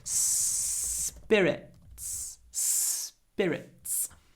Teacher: alcoholic drink so vodka rum Jin they're spirits spir Spirits spir big difference between Russian spirit and English Spirits is we stretch the S